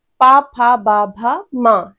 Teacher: जिसमें हमारे दोनों ओष्ठ टच होते हैं तभी हम इनको बोल पाते हैं।